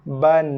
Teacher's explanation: ba bagi 2 atas, kita akan baca dia ba satu harakat dulu, baru bunyikan nun. Lidah kena sentuh di langit berserta dengan sifat nun. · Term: nun mati